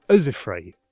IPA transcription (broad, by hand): ʔɤzɪfɹəi